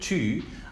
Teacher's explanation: front rounded vowels, like exactly the high vowel in French, U, in the word tu